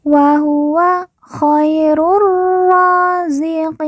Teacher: qi kita baca panjang 2, 4 atau 6 harokat karena di depannya terdapat huruf ya sukun atau ya mati sebelum huruf pemberhentian, yaitu huruf nun.